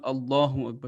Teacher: name of Allah will be pronounced with a thick voice